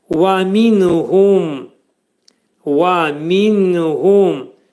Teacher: vəf hərfinin məxrəci dodaqlar qönçələnir, deyilik. Və minhum, nun hərfi izhar olur.